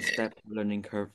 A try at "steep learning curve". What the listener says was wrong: there was a steep not set steep learning curve